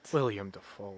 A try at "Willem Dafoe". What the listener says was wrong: Willem, not William. Yeah, you said William.